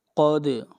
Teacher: آیت نمبر 9، قد، قاف کو موٹا پڑھیں گے، دال کے اوپر قلقلہ کریں گے